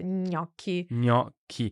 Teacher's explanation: make sure ñ at the start and k at the end, gnocchi